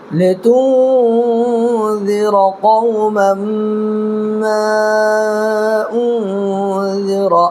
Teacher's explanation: دیکھیں یہاں پر بھی نون ساکن کے بعد حروف اخفا کے 15 حرفوں میں سے ذال آ رہا ہے، تو نون کی آواز کو ناک میں چھپا کر کے پڑھنا ہے۔ اور 2 زبر کی تنوین کے بعد یومن کے 4 حرفوں میں سے میم آ رہا ہے، تو یہاں پر بھی ادغام مع الغنہ ہوگا